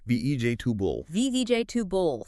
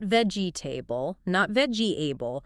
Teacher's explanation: heavy stress on vej and the rest just gets compressed · Three syllables. That e after the g and the a right before the b. They pretty much get swallowed or become just a really quick quiet h. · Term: reduce